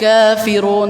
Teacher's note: Kaf 2 harokat, kafirun, tidak perlu dibaca lebih panjang dari 2 harokat. Sebagian ada yang baca gini, qul ya ayyuhal kafirun, jadi kayaknya panjang banget.